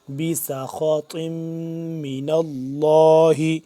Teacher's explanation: اب ان میں سین باریک نارمل طریقے سے پڑھیں گے سواد سے، لیکن جدا کر کے، اور آگے خا اور طوا موٹا پر کر کے پڑھیں گے ، بسخط من اللہ، بی سا خا، بی سا خا با